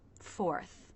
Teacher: need some jaw drop to make the shape of either the aw as in law vowel or the o as in no sounds before the tongue pulls back and up for the R consonant sound. Fourth. And then we finish with the unvoiced TH, where the front part of the tongue comes just out of the teeth, not too far, and air lightly passes through.